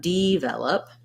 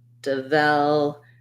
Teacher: You don't want D, you don't want develop, because that would be how we would say it if that first syllable were stressed. I'm stressing on the vel syllable, and that's where my clear vowel is. Devel. And then again, last syllable is unstressed.